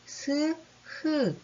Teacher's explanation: 공기가 약간 좁혀지면서 삐져나가는 소리라고 할 수 있겠죠? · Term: 마찰음